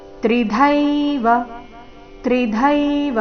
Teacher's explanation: ತ್ರಿದೈವ ಈ ರೀತಿ ವ ದೀರ್ಘ ಮಾಡಬಾರದು